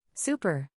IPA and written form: ˈsuː.pər (Super)